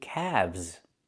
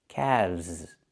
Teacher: The L is silent, and we pronounce the V sound with vibration, plus the Z sound like zebra.